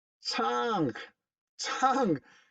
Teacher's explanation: Como hemos visto en este tutorial, el sonido ong. Este es un sonido velar porque se produce aquí en el paladar suave, en el velar. Es un sonido nasal porque sale por la nariz, no por la boca.